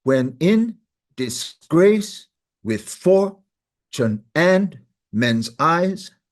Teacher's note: 5 feet, they call them, 5 feet made up of 2 beats. The rhythm is unstressed, stressed, unstressed, stressed, unstressed, stressed. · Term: iambic pentameter rhythm